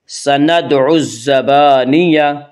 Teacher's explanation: الف لام اگر حروف شمسی کے شروع میں ہوں تو الف اور لام کو نہ پڑھیں گے بلکہ بعد والے حرف سے ملا کر پڑھیں گے